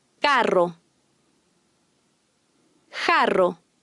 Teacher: The Spanish double R is always trilled, and the single R is trilled after an N or L.